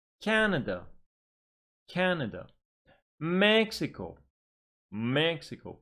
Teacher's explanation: three syllable words stress on the first syllable